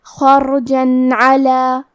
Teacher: ہم یہاں تنوین ظاہر کریں گے اور اسے نون ساکن پڑھیں گے اور بغیر غنہ سے یہ حکم کو ادا کریں گے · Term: اظہار